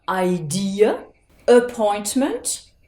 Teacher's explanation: Vous voyez que dans ces mots-là, vous avez la lettre A, mais vous n'allez pas prononcer avec le son A, ni même avec le son A de l'alphabet anglais. Vous l'avez prononcé avec le son schwa.